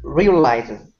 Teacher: This word here is realizes, stress at the beginning.